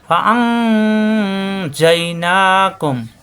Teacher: নুন সাকিনের পরে জিম ইকফা গুন্না